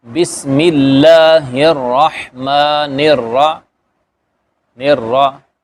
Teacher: اس کے بعد نون ہے، تو جیسے ہم نے ملایا تھا اس کو راہ کو، ٹھیک ہے، تو اب نون کو بھی اسی طرح را سے ملانا، تو بن جائے گا نر را. ٹھیک ہے، را کے اندر صفت تقریر بھی ہوگی، تھوڑی سی تھر تھراہٹ ہوگی. بسم اللہ الرحمن الرحیم، ٹھیک ہے، ایسے اس را کو بھی موٹا پڑھیں گے.